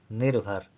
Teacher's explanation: रा को रेफ की मात्रा के रूप में लिखेंगे, निर्भर, क्योंकि यहाँ पर निर्भर रा कम समय के लिए बोला जा रहा है तो आधा रा, और भा से पहले ही बोला जा रहा है